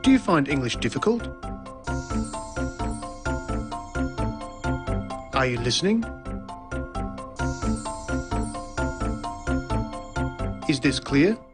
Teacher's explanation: there's the high or rising tone used for asking a yes-no question.